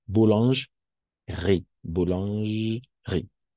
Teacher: las E cuando están entre dos consonantes, prácticamente no se escuchan, son como mudas. Entonces, como tip, sería directo a la boulange y directo vamos a la R, porque digamos, no existe esa E. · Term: E muda